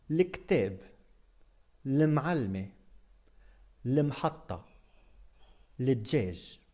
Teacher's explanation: in virtually all dialects of spoken Arabic, the alif from the definite article is dropped, so it's just l.